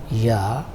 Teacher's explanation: This is a little difficult to notice, but if we pronounce this sound, ya, and try not to move your mouth with shut mouth, if you try ya sound, your tongue glides a little